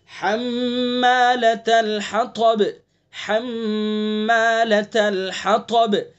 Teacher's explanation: میم مشدد ہے تو غنہ کریں گے